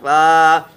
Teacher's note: ऊपर के दांत नीचे के होंठ से लग के फ़ा मिलता है।